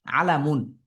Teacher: আইনের মাখরজ কন্ঠনালীতে লামের মাখরজ যেহবার অগ্রভাগ এবং অর্থাৎ এটা মুখে এবং মিমের মাখরজ দুই ঠোটে